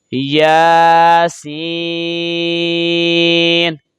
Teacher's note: نون چونکہ غیر قلقلہ ہے تو جب اس پر وقف ہوگا یا رکیں گے تو آواز لوٹ کر نہیں آئے گی۔ یاسین، یہ تو کے اوپر کھڑی زبر ہے، 1 الف کے برابر کھینچیں گے اور سین کے اوپر مد ہے تو اس کو 4 الف کے برابر کھینچ کر پڑھیں گے۔